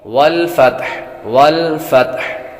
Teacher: جب وقف کریں گے تو ہا ساکن ہوگی لیکن ہا کی آواز ضرور آئے گی